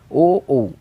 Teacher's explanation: তাহলে কণ্ঠ ও ওষ্ঠ এই দুটো প্রয়োজন হচ্ছে আমাদের ও ও উচ্চারণে। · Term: কণ্ঠৌষ্ঠ বর্ণ